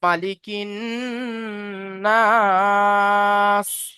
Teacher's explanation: আলিফ মাদ্দাকে একালি পরিমাণ টান দিয়ে পড়তে হয়।